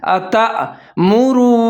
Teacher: تو تا اور حمزہ کو ملا کے پڑھیں گے اور جھٹکے کے ساتھ پڑھیں گے، جیسے اتأمرو، میم کے اوپر پیش ہے، را کے اوپر پیش ہے، آگے وہ ساکن ہے، را پیش و رو، ہونٹ گول کر کے پڑھیں گے۔